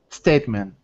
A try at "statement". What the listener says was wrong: Okay, that was fine.